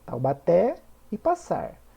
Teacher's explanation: Taubaté e passar são oxítonas pois a sílaba tônica é a última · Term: oxítonos